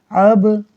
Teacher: قلقلے کا مطلب ہے آواز کا لوٹنا، لہٰذا با میں آواز خوب لوٹے گی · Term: قلقلہ